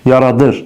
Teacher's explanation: Yaradır, nəyidir? Cümlənin sözün vurğusu düşür ır hissəsinə, çünki zaman şəkilçisi vurğu qəbul edir. Eyni zamanda zaman şəkilçili söz feilin xəbər şəklində olur.